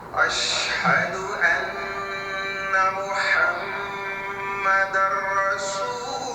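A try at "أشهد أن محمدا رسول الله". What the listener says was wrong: अशहदु, यहाँ पर भी हाथ थोड़ा सा गड़बड़ हो गया, अन्ना मुहम्मदर रसूलुल्लाह। अब यहाँ जब लुल یہاں پر غنہ کرنے کی ضرورت نہیں ہے آپ کو، جلدی بول دینا رسول اللہ، سیدھا للہ، لام کو روکنا نہیں ہے یہاں پر.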